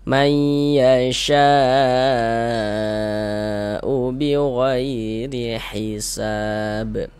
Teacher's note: wajib itu wajib dibaca minimal panjangnya 4 harokat. Jadi 4 sampai dengan 5 harokat panjangnya. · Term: mad wajib muttasil